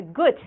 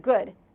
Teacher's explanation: the devoicing of final D, the gut instead of good.